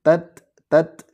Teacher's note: jadi hamesnya ta itu cukup memercik udaranya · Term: ta sukun